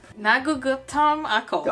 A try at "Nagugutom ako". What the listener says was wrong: Not bad. Not bad. You just have to do it faster.